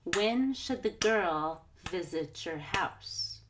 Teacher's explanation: those other words like should that and your got squeezed between those important stressed words